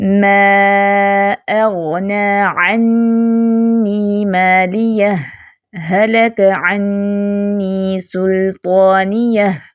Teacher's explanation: اب میں نے کیا کیا، ہا ساکن پروناؤنس کیا لیکن سانس نہیں توڑا، سکتہ کیا، ٹھیک ہے، پھر اگلا ہا پڑھا.